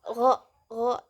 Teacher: keluarnya itu thabqi dari langit-langit belakang